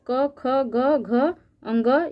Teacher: क से लेकर अंग तक जितने भी यह वर्ण होते हैं यह कंठ ध्वनि के अंतर्गत आते हैं या इसको कंठ वर्ण भी कह सकते हैं कंठ वर्ण और